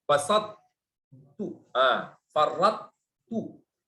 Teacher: Itu ta sama ta, karena ta lebih kuat sifatnya, maka enggak mungkin dia terhapus dalam ta yang lemah. Jadi dia harus muncul. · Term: idgham naqis